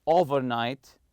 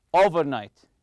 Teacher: stress the first part the over part